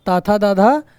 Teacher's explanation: दांत और जीभ के स्पर्श से बोले जाने वाले वर्ण